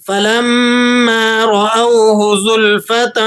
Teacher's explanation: را کو آپ نے پر کر کے موٹا کر کے ادا کرنا ہے، تا کی تنوین پر آپ اخفا ادا کریں گے